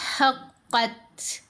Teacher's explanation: جب ہمس کریں گے تو پڑھیں گے حقت، تھ کی آواز. جیسے اردو میں بولتے ہیں نا ہاتھ، تو تھ کی ساؤنڈ آتی ہے، تھالی، تھ کی ساؤنڈ آتی ہے.